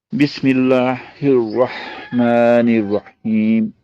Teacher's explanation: یہاں بسم اللہ میم کے نیچے زیر ہے تو اس لیے لام باریک ہو گیا